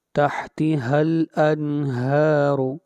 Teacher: ہا کو کھینچ کر پڑھیں گے ایک الف کے برابر